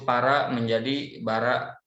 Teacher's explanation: maka pengucapan P diucapkan B karena lebih dekat makhrajnya dan banyak keserupaannya